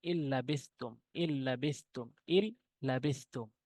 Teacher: নুন সাকিনের পর লাম এসেছে বেলগুন্নার দুইটি হরফের মধ্যে একটি লাম রয়েছে তাহলে এই নুন সাকিনকে আমরা গুন্না করবো না